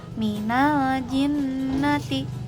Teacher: Gunahnya itu berasal dari guna huruf kedua. Karena nun sukun atau tanwin punya sifat guna, maka sebenarnya hurufnya itu melebur ke huruf kedua sepenuhnya disertai dengan sifat guna. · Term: idgam kamil